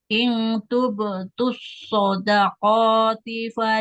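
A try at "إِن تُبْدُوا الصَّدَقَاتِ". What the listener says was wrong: Huruf dalnya jangan seperti itu, ya. Jangan ing tuptus yang tu bedus so do da.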